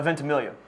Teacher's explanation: You just dropped the G and say it phonetically.